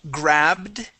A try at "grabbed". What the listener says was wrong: Now we want to pronounce a D sound here. You're producing a small T, saying grabbed. Okay, grabbed. We want a D sound. Now with the D sound, it sounds like this. D. D.